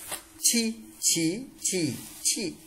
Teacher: các bạn thẳng lưỡi bật hơi, đọc giống trở nặng. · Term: âm mặt lưỡi